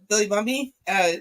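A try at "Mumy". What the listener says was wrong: Moomy, not Mummy, Moomy. I felt like you said Mummy.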